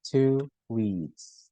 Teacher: We add W after, so it would sound like to eat. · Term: linking